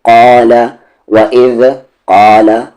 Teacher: وَإِذْ قاف کے ساتھ الف ہے، قا لام پہ زبر لا، قال وَإِذْ قال، قا کو ہیوی کر کے پڑھیں گے موٹی آواز سے